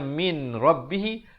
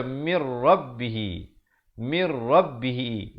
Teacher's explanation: Di sini idgham bila qunnah. Masuk tanpa dengung.